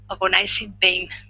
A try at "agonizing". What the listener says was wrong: Here with this word, okay, it's agonizing. The stress is at the very beginning. Agonizing.